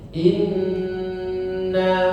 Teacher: Jadi mim dan nun yang bertasydid itu gunnahnya dipanjangkan, sempurna, ya. Dengungnya sempurna. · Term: gunnah mutawwalah